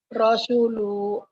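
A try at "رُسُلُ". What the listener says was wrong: Ru. Ru. bukan ro tapi ru ya, Bu ya. Rusulu. Rusulu.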